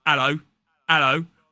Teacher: There are accents across the UK that would drop that H.